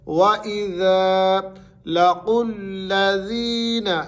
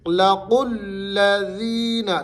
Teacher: قوف جو ہے یہ موٹا قوف ہے، باریک کاف کے ساتھ نہیں پڑھنا